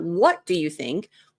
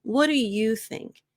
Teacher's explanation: Whenever you're leading meetings and you're leading conversations, I recommend emphasizing you instead of what.